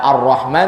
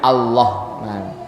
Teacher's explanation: sungguh getarkanlah olehmu huruf rnya karena kalau huruf ro enggak dikasih getaran R jadinya huruf lam dia jadinya l baca Arrahman jadi allahman nah itu jadinya kalau